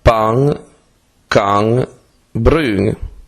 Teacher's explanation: i fonemi aggruppati alla lettera N sono due, dental, come in italiano, e faucal, come nelle parole inglese ring e going.